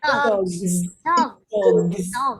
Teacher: G is voiced because I can feel vibration. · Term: Z sound